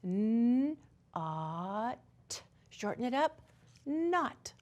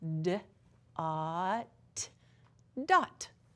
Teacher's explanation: our words are gonna have the short O vowel sound in them, which is ah for octopus